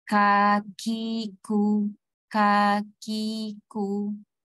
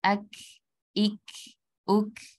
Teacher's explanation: Jadi walaupun suara kita tertahan, tetap ada nafas yang mengalir sedikit. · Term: huruf hamas